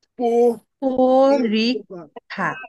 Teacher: দীর্ঘি রস্যু দীর্ঘ, এই চারটা যদি থাকে তাহলে অ এর উচ্চারণ ও হয়ে যায়, ও হয়ে যায়। মানে সংবৃত হয়।